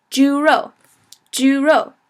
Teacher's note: so remember that's first tone and fourth tone